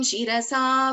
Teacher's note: this is Sha, Talavya, Sha as in Shiva